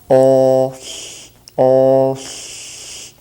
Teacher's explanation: that voiceless L is the way that the L is made in Kootenai